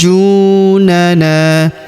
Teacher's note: Kemudian pada huruf ju kita tahan dan tekan ya. Setelah kita panjangkan enam harakat lalu masuk pada huruf junnya kita tahan dan tekan terlebih dahulu.